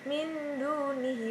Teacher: cara membaca bacaan Ikhfa Haqiqi dari dalam rongga hidung sampai terdengar samar · terdengar samar atau bisa juga menjadi suara atau entri sesudah itu disambut dengan dengung sepanjang satu sampai setengah Alif atau bisa kurang lebih 2-3 harokat kemudian setelah itu barulah masuk untuk membaca huruf sesudah nun mati